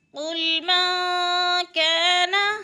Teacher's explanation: قاف موٹے حروف میں سے ہے، پر کر کے پڑھیں گے